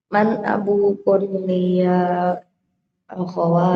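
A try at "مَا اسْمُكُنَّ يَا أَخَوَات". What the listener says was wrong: man abu kunna. Bukan abu kun ya. Abu kunna ya akhwatu. Kunna nggak boleh dibaca kun. Abu kunna. Kalau kum laki-laki ya kum. Kalau kunna harus diharokati. Abu kunna ya akhwatu.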